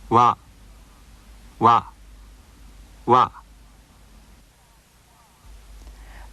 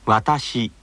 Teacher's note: this sound wha is more relaxed than the sound in English words like water so be careful not to round your lips when pronouncing it